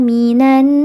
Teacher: Maka dibacanya panjang. Boleh dua harakat, boleh empat harakat atau enam harakat. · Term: mad arid lukun sahih